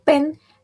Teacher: Contohnya bunyi peh pada kata pen dihasilkan ketika kedua bibir menutup lalu udara dilepaskan. Sedangkan bunyi pada kata fish dihasilkan ketika bibir bawah menyentuh gigi atas sehingga menghasilkan gesekan udara.